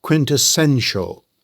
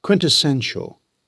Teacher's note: It has four syllables. The stress lands on the third syllable